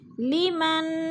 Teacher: نون ساکن کے بعد کاف آ گیا ہے تو اخفا ہو رہا ہے، آواز کو ناک میں چھپا کر پڑھیں گے